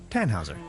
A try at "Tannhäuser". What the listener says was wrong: We'd pronounce it Tannhäuser with an umlaut.